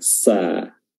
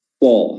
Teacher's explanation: Ya, sod lebih tebal. Ya, dan ketebalannya itu didapat dari terangkatnya lidah bagian belakang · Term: sifat isti'la